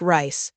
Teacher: uses the R sound with your tongue pulled back